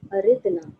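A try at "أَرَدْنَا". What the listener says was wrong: Aradna, Aradna. Aradna. The fatha. The ra has a fatha, so this is what I wanted you to do it verbally, orally, so you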